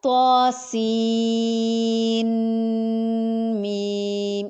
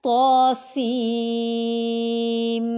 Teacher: ادغام ہو رہا ہے، نون کی آواز میم میں مرج ہو جائے گی۔ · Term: ادغام ود غنہ